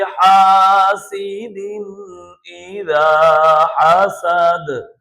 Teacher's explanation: دال متحرک ہے، لیکن جب ہم وقف کر رہے ہیں تو اس صورت میں یہ ساکن ہو رہا ہے، حالت وقف میں ساکن ہو رہا ہے، تو یہاں پر قلقلہ ہم کریں گے